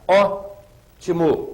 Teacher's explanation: ótimo eu tenho a última a penúltima e a anti penúltima a anti penúltima é a que é mais forte portanto se trata de uma palavra proparoxítona nem sempre isso é · A antepenúltima é a que é a mais forte.